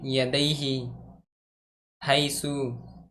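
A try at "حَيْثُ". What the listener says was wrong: सू पे भी खींच रहा है, यह हैसु।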